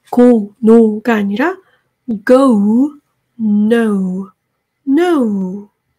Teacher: 이것도 이중 모음이기 때문에 여러분들이 끝까지 소리를 한숨에 내주셔야 돼요. 우 소리까지 들리는 게 정말 중요하고요. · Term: gold sound